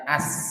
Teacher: jadi sambil jalan kemudian desisnya juga banyak karena dia sifatnya sofir, bukan sekadar hams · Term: rokhawah